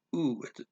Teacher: l at the end of the word is just pronounced like a little double o sound and drops off